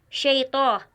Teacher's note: शैतान का तौ और रजीम का रा मोटे पढ़े जाते हैं। शैतो, यहाँ पर जो तौ है वो पुर पढ़ा जाएगा